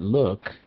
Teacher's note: this is not the oo sound it's the uh sound